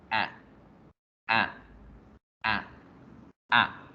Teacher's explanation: Yo debo pronunciar la A y al final, antes de terminar de decir la A, convertirla como en una E.